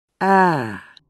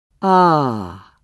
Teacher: For E, the tongue is high up in the mouth. Then it moves a little lower down for each vowel. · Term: Height